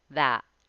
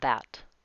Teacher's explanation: That has an American T. It's stopped.